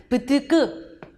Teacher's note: 폐에서 공기를 퍽 터뜨려서 파열음이다 라고 하고요. 스스 하면 좋은 기관 좁혀서 마찰 이뤄낸다.